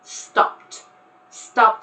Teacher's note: just the P and the T sounds together without any sort of vowel in between